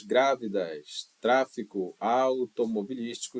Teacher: Quando você conta de trás para frente, você vai perceber que é a terceira sílaba a mais forte em todas as palavras